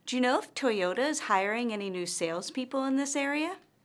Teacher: notice that her intonation rises at the end of this yes or no question. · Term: rising intonation